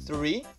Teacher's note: Tem o TH antes do R, é um TH desvozeado que a gente usa também com a ponta da língua para pronunciar ele.